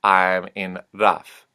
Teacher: the voiced consonants at the end of a word will take a unvoiced sound. So V becomes F.